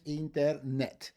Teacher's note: We end in a t, the stress of the word is on the last syllable